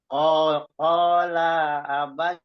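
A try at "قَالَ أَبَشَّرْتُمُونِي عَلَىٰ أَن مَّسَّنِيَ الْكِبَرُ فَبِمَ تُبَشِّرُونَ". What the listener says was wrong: La-nya jangan diayun, Pak. La-nya nggak diayun. La-nya nggak diayun. Qala abasyar.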